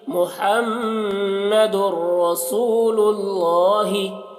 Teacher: اب یہاں پر دیکھیے میم میں ہم غنہ کر رہے ہیں کیونکہ میم مشدد ہے، را کو پور پڑھ رہے ہیں کیونکہ را مشددہ کے اوپر زبر ہے، سو یہاں پر واو مدہ ہے تو اسے تھوڑا کھینچ رہے ہیں، اور اللہ کو پور پڑھ رہے ہیں کیونکہ اللہ کے نام سے پہلے پیش ہے